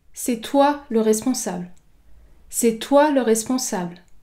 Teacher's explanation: Ici, j'accentue la syllabe toi. Le mot a une seule syllabe. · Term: accent d'insistance